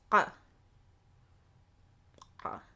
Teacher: And it is a guttural constriction. It's more sharp, I would say. It's not a gargling. It's not gargling, and you're not ha, clearing your throat.